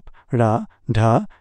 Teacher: उत्क्षिप्त, flapped tap, ड़, ढ, जीभ का झटके से तालु को छूना